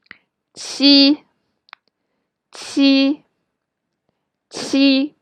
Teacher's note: remember, your vocal cords will be vibrate when you pronounce qi